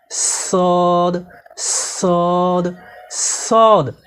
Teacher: সদ হরফকে জিহ্বার আগা সামনের নিচে দুই দাঁতের গোড়ার সঙ্গে লাগিয়ে শীর্ষসহ মোটা করে পড়তে হয়।